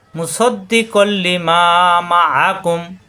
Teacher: তানবিন নুন সাকিনের পরে লাম র আসলে তাজদি ধরে মিলিয়ে পড়তে হয়, গুণনা হবে না। এই দুই জবরের এক জবর এসে লামের সাথে মিলবে, গুণনা হবে না।